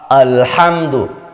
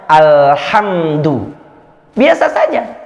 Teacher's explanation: Hamzah tidak termasuk ke dalam kelompok huruf-huruf isti'la tadi. Maka huruf hamzah harus dibaca tipis.